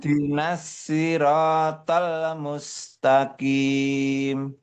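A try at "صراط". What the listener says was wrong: Sudah bagus, tinggal ada sedikit pantulan di tolla. Enggak boleh tolla, tapi tolmus, bukan tollamus, enggak.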